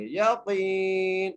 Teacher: قاف کو یا سے ملاتے ہوئے ایک الف کی مقدار کھینچ کے پڑھیں گے. یقین، نون کو وقف کی صورت میں ساکن کر دیں گے.